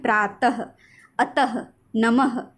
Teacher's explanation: अह एक विसर्ग होता है जिससे कोई शब्द शुरू नहीं होता है, इसे बोलने पर ह की ध्वनि निकलती है